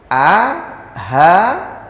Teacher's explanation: A, ha keluar dari tenggorokan bagian bawah.